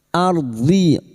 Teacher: Ardi ro sukun yang didahuli fathah kita baca tafkim